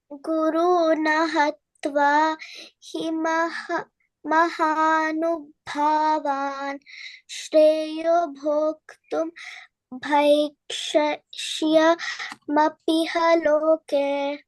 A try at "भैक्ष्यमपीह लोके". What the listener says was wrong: अपीह लोके पी दीर्घ